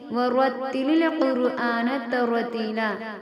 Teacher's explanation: را کو پر کر کے پڑھیں گے، پر یعنی کہ موٹا کر کے